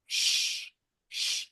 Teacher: they're hissing sounds. The throat doesn't vibrate.